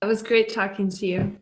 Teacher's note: The schwa sound in the reduced form of to, as it links to the word you, can sound very similar to dropping the vowel altogether.